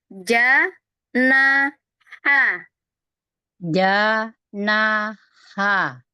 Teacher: Yang dikeluarkan. Dikeluarkan itu bukan suaranya, bukan powernya atau tenaganya, tapi yang dikeluarkan ada hawanya aja. Jadi kayak berbisik aja ya.